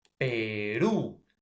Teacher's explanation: tiene la mayor fuerza de voz en la última sílaba y termina en una vocal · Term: aguda